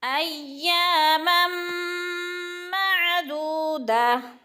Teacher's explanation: الا ایاما معدودہ، ایامم پہ جو ہے دو زبر تنوین کے بعد میں مشدد آ گئی ہے تو غنہ کریں گے، یعنی ادغام کریں گے اور غنہ ناک میں آواز لے جائیں گے۔